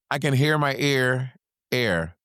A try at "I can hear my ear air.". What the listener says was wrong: Say it without pausing. I can hear my ear air.